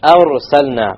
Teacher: Heavy ra, because it's silent with a fatha before it.